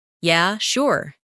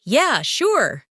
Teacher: in a flat tone, it might mean they're not really interested. But if they say, Yeah, sure. with excitement, it's genuine agreement. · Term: intonation